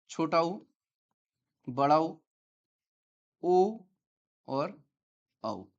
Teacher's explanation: छोटा ऊ, बड़ा ऊ, ओ औ ये वृत्ताकार हैं, वृत्तमुखी हैं और वर्तुलित हैं।